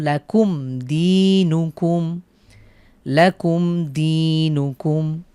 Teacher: মিম সাকিনের পরে দাল হয়েছে, আমরা গুন্না ছাড়া মিলিয়ে পড়ব